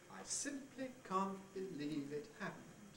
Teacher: The stepping head goes da da da da da da da. And at each accent, we have a step down onto a new level.